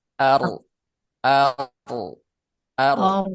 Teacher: Takrir itu pengulangan. Pengulangannya ini huruf ro itu satu kali pengulangan teman-teman. Ridah itu bergetarnya satu kali.